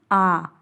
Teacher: पूरा मुख खुलता है जैसे आ बोल कर के देखिए आ आ बोलने में हमारा पूरा मुंह पूरी तरीके से खुल जा रहा है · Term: विवृत